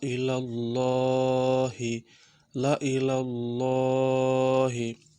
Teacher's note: জায়েদা আলিফে জায়েদা এটা আলিফটা পড়া হবে না আর এই যে আল্লাহর উপরে যে খাড়া জবর সেখানে টান হবে এক আলিফ টান দিতে হবে